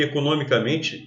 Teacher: Até porque essa palavra aqui, economicamente, é uma palavra derivada. A sílaba tônica, que era no, era uma palavra proparoxítona, a sílaba tônica passa a ser men.